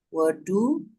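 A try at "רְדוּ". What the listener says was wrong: Bukan wedu, ini redu.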